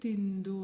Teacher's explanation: ಇಲ್ಲಿ ಅನುಸ್ವಾರಕ್ಕೆ ನ ಸೌಂಡ್ ಬರುತ್ತೆ ಹಾಗಾಗಿ ತಿಂದು ಅಂತ ಓದಬೇಕು